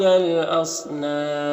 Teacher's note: اور یہاں پر الف لام حروف قمری حمزہ کے شروع میں تو لام کو پڑھیں گے، الف کو نہیں پڑھیں گے. صاد حروف مستعلیہ میں سے پر پڑھیں گے. اور یہاں پر وقف کی صورت میں مد عارض وقفی ہوگا، تو اس طرح سے پڑھیں گے.